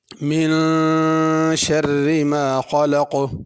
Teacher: من کے نون پہ غنہ کرنا ہے، ذرا اس کو بڑھا کر پڑھنا ہے۔ خلق میں خا کو بھی پر کرنا ہے، قاف کو بھی پر کرنا ہے، خلق نہیں پڑھنا۔